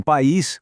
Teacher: Em país, com acento agudo no i, o a e o i são fortes. Eles brigam, então cada um vai para sua própria sílaba, formando um hiato. A palavra fica com duas sílabas.